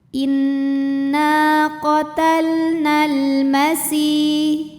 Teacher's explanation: Alif lamnya dihukumi dengan alif lam qamariyah karena alif lam menghadapi huruf qamariyah yaitu mim. Cara bacanya lam dibaca dengan jelas atau biasa disebut dengan izhar qamari.